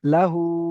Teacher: হায়ের উপরে উল্টা পেশ এসেছে, উল্টা পেশ ওয়াও মাদ্দার সমতুল্য, একে একালি পরিমাণ টান দিয়ে পড়তে হবে